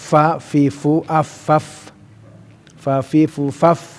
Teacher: Dza fa ya tanggung jawaban fa fi fu af faf fa fi fu faf ya serah makhraj huruf fa huruf yang apa bibir bawah di gigit dengan gigi yang atas